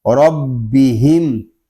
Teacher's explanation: را کو پر پڑھیں گے اور با مشدد ہے، اس کو جماؤ کے ساتھ ادا کریں گے